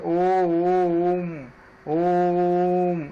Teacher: काफी जोर से हम इसको लंबा खींचते हैं, ओम इस तरह से, इस प्रकार से एक जोर से हम उच्चारित ध्वनि उत्पन्न करते हैं। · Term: जोर से उच्चारण